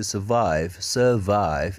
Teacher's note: r-nya r-nya hilang karena ketemunya bukan sama vokal ya ketemunya kan V ya